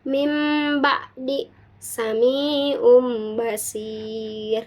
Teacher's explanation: Nah, kaidah membacanya yaitu bunyi nun mati atau tanwin diganti atau ditukar menjadi suara mim disertai dengan degungan karena bertemu dengan huruf ba atau ba ya. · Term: iqlab